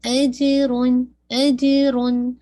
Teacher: جن پہ قلقلہ ہے لیکن بہت پرومیننٹ نہیں ہے